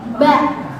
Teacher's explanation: Ba di syafatain. Bibirnya rapat.